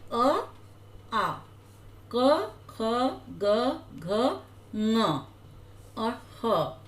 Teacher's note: जब आप इनको बोलकर देखेंगे तो इनको बोलने में गले से आवाज निकलेगी